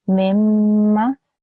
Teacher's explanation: Can you hear the m sound? That sound should be there for at least 2 seconds. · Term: ghunna